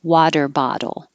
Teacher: it's technically a flap or a tap because you're not really making a duck with a lot of · ah and your tongue rises up to an e i i both of these t's change to d's